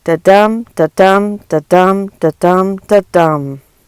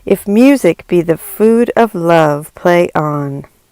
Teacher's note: a two-syllable foot, which in this case consists of an unstressed syllable followed by a stressed syllable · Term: iambic pentameter